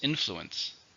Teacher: 3 syllables, stresses on the first.